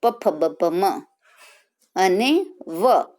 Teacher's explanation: તો હોઠ બે આપણા લિપ્સ ભેગા થાય અને એ શબ્દ બોલાય છે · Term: ઓષ્ઠ્ય